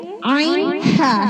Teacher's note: عین حلق کے درمیان والے حصے سے ادا ہوتا ہے۔ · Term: وسط حلق